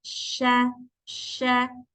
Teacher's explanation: akan ada udara yang menyebar memenuhi mulut kita ketika mengucapkan huruf syin